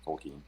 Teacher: the stress is on the first syllable, but it's not a schwa or a completely, reduced vowel